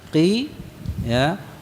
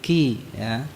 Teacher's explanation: Kalau qaf makhrajnya ada di pangkal lidah ya, bagian atas. Jadi menempel pada langit-langit yang lunak ya, sedangkan kaf di bawahnya. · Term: qaf dan kaf